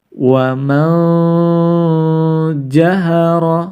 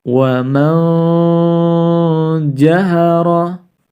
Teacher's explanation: mengarah kepada makhroj huruf Jim yang mana lidah kita mengarah pada langit-langit bagian atas